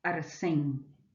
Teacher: una de las características que une a todos estos hablantes también la realización de la n final en la parte de atrás que se produce un sonido velar